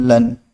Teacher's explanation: مد لازم اور مد لین لازم کو 3 الف یعنی 6 حرکات کی مقدار تک کھینچ کر پڑھیں گے